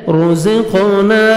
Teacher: رزقنا, را کو مرپیش ہے, را کو موٹا کر کے پڑھیں گے. زا کو زور سے ادا کریں گے · زا کو زور سے ادا کریں گے. قاف حروف قلقلہ میں سے ہے, ڈبل ساؤنڈ آئے گا. الف مدہ, نون کو 1 سیکنڈ کھینچنا ہے.